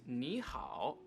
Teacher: we have two characters here that both have the v tone the first character is going to be pronounced with the second tone or the rising tone